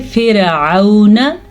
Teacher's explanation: और ये वाव लीन है, वाव साकिन से पहले ज़बर हो तो वाव लीन होता है, उसे लंबा नहीं करते, ना ही उसे खींच के पढ़ते हैं